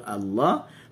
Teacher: Huruf lam, walaupun dia bukan tergolong dalam huruf isti'la, tapi special lam pada lafzul jalalah kalimah Allah. Okey, apabila dia berharakat fathah Allah, sebut Allah, maka dibaca dengan tafkhim tebal.